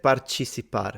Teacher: So the C in her accent sounds more like a ch